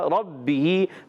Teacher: ربہ با مشدد ذرا رک کر ادا کریں گے. ہاں نیچے زیر ہے، کھینچنا نہیں ہے.